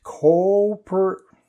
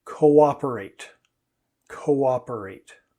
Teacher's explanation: we actually get two sounds out of those two o's